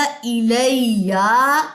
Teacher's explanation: یا کی زبر کو لمبا نہیں کرنا